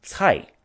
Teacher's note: it is in fact the second tone which goes up